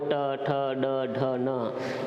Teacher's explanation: इनका उच्चारण स्थान मूर्धा है, इनको हम मूर्धन्य वर्ण भी कहते हैं।